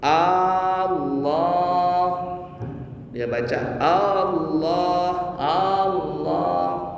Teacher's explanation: yang sering salah yang sering dilakukan sama orang kita dan ini salah adalah memanjangkan huruf hamzah · memanjangkan huruf hamzah di lafaz jalalah